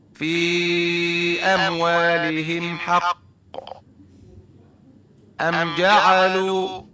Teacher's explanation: Izhar syafawi berarti dibaca jelas dan tidak ditekan. Tidak ada dengung-dengung, tidak ada samar-samar, tidak ada ditekan-tekan sebanyak dua harokat.